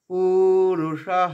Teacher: মূর্ধন্য স্বয়ের পরে বিসর্গটা হয়ের উচ্চারণ